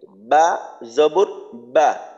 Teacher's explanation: বা মাখরাজ হলো দুই ঠোঁট থেকে বা উচ্চারিত হয় · তো আলিফ জবর আ, হলকের শুরু থেকে হবে। তারপর বার মাখরাজ হলো 2 ঠোঁট থেকে বা উচ্চারিত হয়